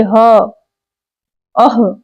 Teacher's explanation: जैसे ह, अह, तो क्या हो गया, अह बोले तो अ और ह के उच्चारण हो गया, इसी को काकल्य कहते हैं, काकल्य वर्ण। ह महाप्राण सघोष ध्वनि है तथा काकल्य वर्ण भी है